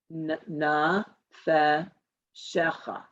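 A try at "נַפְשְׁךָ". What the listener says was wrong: Naf. It's naf. It's more of a blend. Naf shecha. Particularly when you do have the letters, but there's 2 dots under it, you do have a blend there because it's a mouthful to say a nafeshecha. So it's nafshecha.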